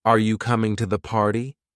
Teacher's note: For example, in a question like, "Are you coming to the party?" the voice will typically rise at the end, showing it's a yes or no question. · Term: rising